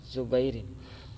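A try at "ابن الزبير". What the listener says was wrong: الزبیر مرب باللام تو یہ پڑھتا ہی نہیں یہ دشمن ہے واو کا بھی دشمن ہے اور الف لام کا بھی دشمن ہے یہ بیچارہ پڑھتا ہی نہیں پتہ نہیں کیا ہے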